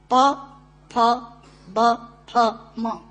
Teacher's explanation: दोनों होंठ मिलाकर बोले जा सकते हैं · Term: ओष्ठांग